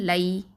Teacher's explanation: நாவுடைய side edge அப்புறம் நுனி நாவு ரெண்டுமே இதில் வந்து பங்கு பெறும். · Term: ஹாஃபத்துல் லிசான்